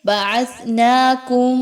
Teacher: میم ساکن کے بعد میم کا حرف ہے، اس لیے یہاں پر غنہ کرتے ہوئے پڑھیں گے، آواز کو ناک میں لے کر جائیے